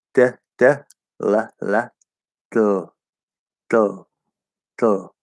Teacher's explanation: you hold the same position with the tip of the tongue, but you let the sides of the tongue release from touching the sides